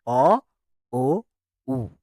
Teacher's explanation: কারণ এই মৌলিক স্বরধ্বনিগুলো উচ্চারণ করার সময় আমাদের ঠোঁট দুটো কি হয়, কম বেশি সংকুচিত হয় বা গোল হয় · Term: কুঞ্চিত বা বর্তুল স্বর